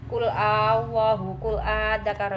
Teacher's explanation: dibaca panjang panjangnya tiga Alif atau enam harakat